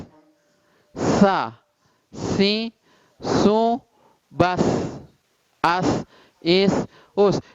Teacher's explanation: Itu nggak akan bisa hilang desis itu dari huruf sin dalam keadaan apapun. Baik dia fathah, sa, kasroh, si, dhammah, su.